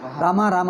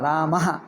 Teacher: ರಾಮ ರಾಮ ಅಲ್ಲ ರಾಮಹ ಹ ಬರಬೇಕು ಯಾಕೆಂದರೆ ವಿಸರ್ಗ ಇದೆ